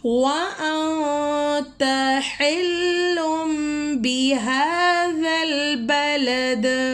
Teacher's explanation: یہاں پہ نون ساکن ہے، یہاں پہ اخفا ہو رہا ہے، ہم نے نون کی آواز کو ناک میں چھپا کر پڑھنا ہے